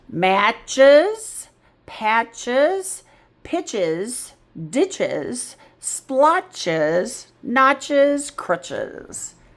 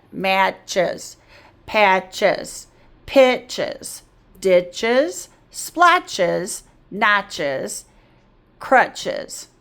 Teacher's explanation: The S is still a consonant, but it's making the Z sound.